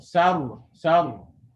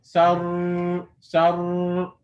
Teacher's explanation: the tongue remains on the upper teeth while the sound of the ra is produced. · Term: ra is sakin